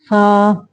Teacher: ऊपर के अगले दोनों दांतों की नोक जब नीचे के होंठ के अंदर वाले हिस्से से लगे, यानी फा की अदायगी के वक्त जब सनायालिया यानी सामने के दो जो दांत का सिरा निचले होठों के शिकम से लगे यानी अंदर वाली साइड से लगे तो फा अदा होता है।